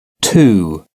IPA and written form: tuː (two)